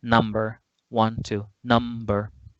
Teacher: the word number has 2 syllables. Which syllable gets the stress, the most prominent part? The first one